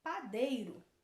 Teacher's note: e na palavra padeiro também é a penúltima sílaba mais forte então ela também é uma palavra paroxítona e na letra h